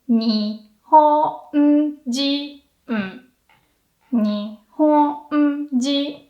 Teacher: Japanese person, that's another nakadaka. So this time you go low and then high until the very end. So you make like a hill, not really Mount Fuji.